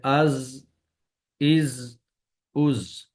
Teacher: سیٹی کی آواز ادائیگی کے وقت زبان کی نوک کو سامنے والے نیچے کے دو دانتوں کے کناروں سے مضبوطی سے لگائیں گے